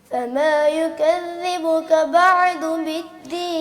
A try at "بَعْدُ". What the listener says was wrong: آپ بھی عین کو ہلا رہے ہیں بیٹا،